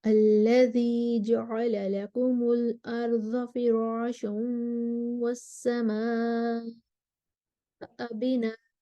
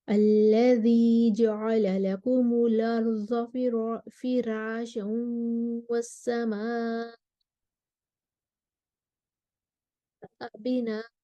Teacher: کوئی خاص اختلاف نہیں ہے، مد متصل ہے، فراشوں پر ورش کے لیے ترقیق الراء ہے، الارضی پر نقل الحرکہ ہے ورش کے لیے